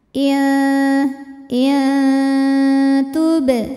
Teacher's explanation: sebab ada nun sukun yang menghadapi huruf Ta Maka cara bacanya bunyi nun sukun samar-samar disertai dengungan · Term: ikhfa Hakiki